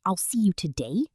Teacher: in a standard Australian accent, the A sound in mate or day sounds more like might or die. If a speaker says, I'll see you today, a confused listener might hear, I'll see you to die. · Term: Australian vowel shift